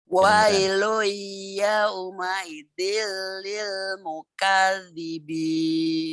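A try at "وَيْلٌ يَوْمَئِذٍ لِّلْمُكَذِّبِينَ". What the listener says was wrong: Kedengarannya kayak yau ya Bu ya. Yau. Wailu yau. Enggak lah yau. Wailu yau. Ngalir Bu linnya. Yau jangan yau. Wailu yauma idzil lil mukadzibin.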